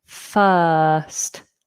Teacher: Your tongue is very flat and relaxed. It's the long version of a schwa. First. We don't pronounce the R, and this is another little tripping point for people.